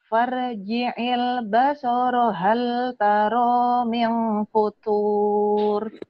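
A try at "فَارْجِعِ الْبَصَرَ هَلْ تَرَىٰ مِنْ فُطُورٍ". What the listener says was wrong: Ya, itu ya pendek ya. Farji'il, farji'il basoro hal Farji'il basara hal tara min futur.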